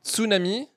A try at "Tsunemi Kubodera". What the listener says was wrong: Il n'y a pas le A. Tsunemi, c'est comme tsunami mais avec un E. Kubodera.